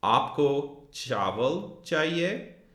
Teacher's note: just from that rising intonation at the end of the sentence, aapko chawal chahiye, we know that this is a question.